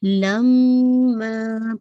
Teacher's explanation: لم hold for 2 count and ما stretch for 2 count